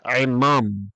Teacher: the first part, ayin mem, is a closed unaccented syllable. So the hirik is going to be a shorter sound there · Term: defective hirik